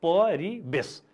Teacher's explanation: परिवेश शब्दको उच्चारण कसरी गरिन्छ हेर्नुहोस् त, परिवेश। यहाँ व छ, वेशमा व छ, तर हाम्रो उच्चारणमा त व हुन्न, ब हुन्छ। त्यसकारणले वेश, परिवेश पनि भन्दैनौँ हामी, परिवेश भन्छौँ।